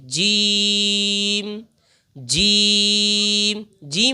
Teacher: इसको पढ़ने का सही तरीका यह है कि जबान का जो बीच का हिस्सा है, इसको हम ऊपर तालू से मिला लेंगे और फिर इसको अदा करेंगे। · زبان کا جو بیچ کا حصہ ہے اس کو ہم اوپر تالو سے ملا لیں گے